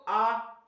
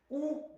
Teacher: हल्का सा जीभ पीछे की ओर जा रही है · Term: पश्य स्वर